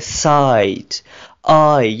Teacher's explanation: اس نے آئی کے ساؤنڈ کو چینج کیا, اس کو لمبا کر دیا